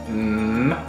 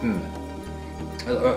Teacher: It is a voiced consonant that can remain ringing for quite a long time, mm, or a short time.